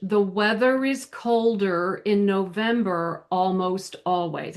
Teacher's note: our Rs are always rotic in most uh North American accents. So whether you have a break after the R or if you link it directly to the next word, you're still going to pronounce that R.